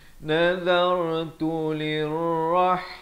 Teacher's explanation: zal di hujung lidah bertemu ra, dibacakan ra-nya dengan tebal